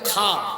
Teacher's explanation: যেখানে খুশখুশানি কাশ হয় সেখান দিয়ে খা